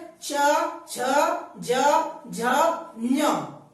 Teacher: तो ये है च, छ, ज, झ, ञ, यानी कि हमारे जीभ का अगला वाला हिस्सा, जीभ का अगला वाला हिस्सा तालू से स्पर्श करता है, यानी कि दांतों से हल्का ऊपर स्पर्श करता है, इसलिए इसको तालक व्यंजन कहते हैं।